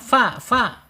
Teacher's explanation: Asyafatain makhrajnya, kemudian secara sifat di alhams ya